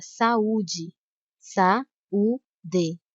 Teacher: a letra a e a letra U são pronunciadas com a mesma intensidade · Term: hiato